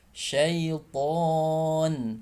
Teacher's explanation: Ya, huruf to ya, sama seperti huruf ta, sama-sama makhrajnya di ujung lidah bertemu dengan gusi depan atas ya. Namun huruf to dia suaranya tebal ya, karena vokalnya juga o, suaranya tebal ya.